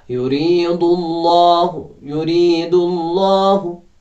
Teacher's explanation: तरकीक यानी सिफत इस्तिफ़ाल है इसमें, तो इसको बारीक पढ़ें, लेकिन अल्लाह में जो है उसको मोटा पढ़ें चूँकि अल्लाह से पहले पेश आ गया है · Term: तफ़कीम